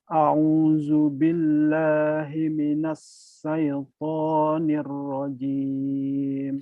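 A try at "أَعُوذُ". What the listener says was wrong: Ya, kurangnya shin nih. A'u tuh ya. A'udzu billah. A'u ainnya masih kurang ini. A'udzu billahi minasy syaitonir rajim.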